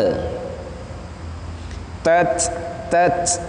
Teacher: tak yang disukun itu ketika dimatikan dia harus hams. Tat keluar sedikit nafas.